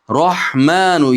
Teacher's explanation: ikki harakat miqdor cho'zamiz.